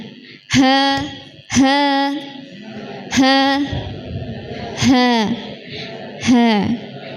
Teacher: Ringan dari tenggorokan bawah bukan dari dada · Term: huruf ha